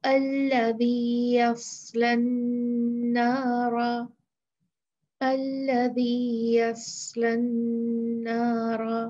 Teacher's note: صاد کی صفت وسل یا سیٹی نہیں ہے، تو اس میں سیٹی کی آواز نہیں آنی چاہیے